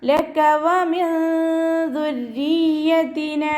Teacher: നൂൻ സാക്കിനയെ മറച്ചു വെച്ചിട്ട് മണിച്ചോതി കൊടുക്കുക. നൂനിൻ്റെ സൗണ്ടിനെ വ്യക്തമായിട്ട് കേൾപ്പിക്കാതെ ഒന്ന് ഹൈഡ് ചെയ്യുകയും ചെയ്യുക. അതോടൊപ്പം തന്നെ മണിക്കുകയും ചെയ്യുക കേട്ടോ. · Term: ഇഖ്ഫാഇൻ്റെ